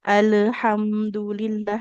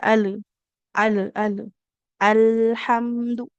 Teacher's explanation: lidahnya pastikan tetap menekan di gusi ya agar terjaga sifat mengalir suaranya